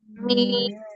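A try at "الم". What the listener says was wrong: Good, अच्छा ट्राई कर रहे हो आप लोग, लेकिन मुशद्दद का गुन्ना नहीं कर रहे, स्ट्रॉन्ग गुन्ना, स्मल गुन्ना।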